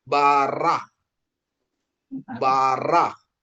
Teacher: Bentuk ini tidak dibunyikan atau dibunyikan sebagai huruf mati ya. Penekanannya di tenggorokan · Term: kap sopit